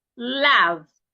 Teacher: To articulate that sound, the tip of your tongue should touch the upper part of your teeth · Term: L sound